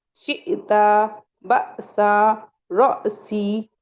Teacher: حمزہ جب ساکنہ ہو گیا تو پھر اسے ہم جھٹکے سے پڑھیں گے